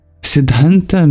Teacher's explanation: The dh is a dental sound, aspirated, maybe difficult for you.